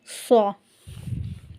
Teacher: زبان کی نوک کو نیچے والے 2 دانتوں کے نچلے کنارے سے لگانا ہے، یعنی نچلی جڑ سے لگانا ہے، اور پڑھنا ہے صا۔ · صا جو ہے یہ بہت موٹا اور اونچا کر کے پڑھنا ہے، اور سیٹی کی آواز سے پڑھنا ہے، بالکل ایسے ہی جیسے زا اور سا پڑھا، جبکہ زا اور سا کو ہم نے نارمل پڑھا، موٹا اور اونچا نہیں کیا۔ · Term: صا کا مخرج, صاد